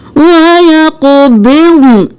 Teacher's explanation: یہاں پر ہم وقف کریں گے، نون کی صرف آواز آئے گی، نون ساکن ہو جائے گا